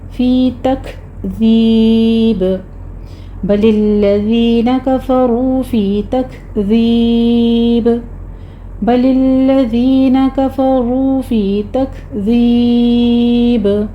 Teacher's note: آخر پر با کے اوپر قلقلہ کریں گے کیونکہ با کو ہم ساکن کر رہے ہیں · تک کاف پر ہمس کرنا ہے